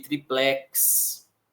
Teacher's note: triplex tem força na sílaba final